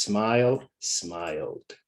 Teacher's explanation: We don't say the E in smile. So the last sound that we hear is L, L, L, smile. L, L is voiced. So ED, D is voiced.